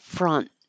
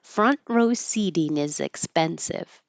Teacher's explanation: We don't say that T, you just hold it with the tongue, so I didn't even write it here, just front.